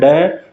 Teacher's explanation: उछला हुआ। मतलब जीभ झटके से एक तो ऊपर उछलती है, ठीक है, उसके बाद एक संग नीचे आ जाती है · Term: उत्क्षिप्त व्यंजन